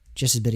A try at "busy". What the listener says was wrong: I think you said just as biddy.